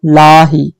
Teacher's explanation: यहाँ लाम बारीक है, लाम को मोटी आवाज में नहीं पढ़ेंगे